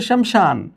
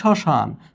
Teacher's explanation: শব্দের শুরুতে যদি ম ফলা থাকে তাহলে সেই ম ফলার উচ্চারণ থাকবে না। শুধু সংশ্লিষ্ট বর্ণটি আনুনাসিকভাবে উচ্চারিত হবে।